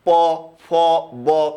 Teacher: প, ফ, ব সবগুলোতে দুই ঠোঁটের সাহায্য লাগে। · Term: ওষ্ঠধ্বনি